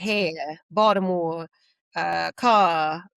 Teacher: R's are very tricky when you're from Baltimore, but no, you don't say them.